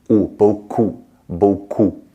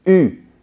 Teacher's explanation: Rounded mouth for O-U, and narrow mouth, flat, U for just U on its own.